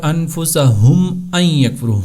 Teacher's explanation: میم ساکن کا تیسرا قاعدہ ہے اظہار شفوی، یعنی کہ جب بھی میم ساکن کے بعد میم یا حرف با، یعنی حرف میم اور حرف با کے علاوہ جتنے باقی حروف ہیں وہ آئیں گے تو وہاں پر میم کی آواز کو سمپل سادے انداز میں بغیر اخفا، بغیر غنہ اور بغیر ناک میں لے جائے اور بغیر لمبا کیے ہوئے ادا کریں گے